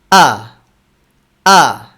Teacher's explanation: হামজা আদায়ের সময় শক্ত আওয়াজে উচ্চারণ করতে হবে। ভোকাল কর্ডসের তার দুটো সজোরে লেগে থাকবে। যখন আমরা ফাতহা দিয়ে উচ্চারণ করব তখন শুধু আলাদা করে ফেলবো।